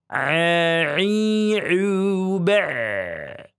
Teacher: huruf ain harus benar-benar beda dengan hamzah. Di tengah tenggorokan